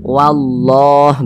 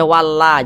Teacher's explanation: ada lafaz Allah sebelumnya ada huruf yang memiliki tanda baca fathah maka lam jalalahnya dibaca tebal sehingga dibaca wallah begitu Jangan dibaca walla jangan tapi dibaca wallah